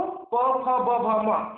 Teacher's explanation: प वर्ग में ये 5 व्यंजन है, तो प, फ, ब, भ, म इसका उच्चारण हम करते हैं तो हमारी जो ओठ है वो आपस में मिलती है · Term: ओष्ठ